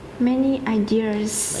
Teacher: Ideas. Second syllable stress.